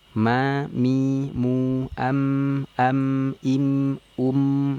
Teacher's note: kalau mim ini pertemuan antar dua bibir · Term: huruf mim